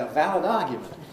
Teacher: Australian doesn't have a weak I in the way that we do in Britain.